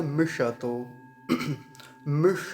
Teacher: मिश तो बीच में मूर्धन्य सकार है